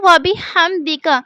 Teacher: ہا کو ادا کرنے کا ایک خاص مخرج ہے، یعنی اسے حلق کے درمیانی حصے سے ہی ادا کیا جا سکتا ہے